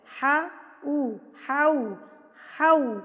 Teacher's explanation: ابھی حولینی اس کو پڑھتے ہیں نا، ہو پڑھ رہے ہوتے ہیں، ہو غلط ہے، ہو نہیں ہے. ہا کے اوپر زبر ہے تو یہ منہ کھلے گا. واؤ گول ہے تو ہاؤ بن گیا